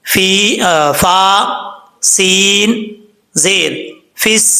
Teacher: اس کے بعد فا ہے، فا کا مخرج آپ کو پہلے بتا چکا ہوں، فا کے بعد یا ہے، یا کو فا کو جب سین سے ملائیں گے تو بیچ میں یا، الف، لام تینوں حرف کو چھوڑ دیں گے، فا، سین زیر فس، سین زبر سا، فسا۔ اچھا، یہ سین کے اوپر کیونکہ شد ہے، اس لیے تھوڑا سا زور دے کے پڑھیں گے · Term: مشدد حرف